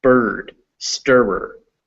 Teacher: I is pronounced schwa before an R that is at the end of a word or followed by another consonant.